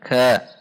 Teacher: Perhatikan sifat dan makhraj huruf kaf. Dibaca ka, dibaca lembut ka dan ada dorongan udara. Ka, tidak dibaca qa.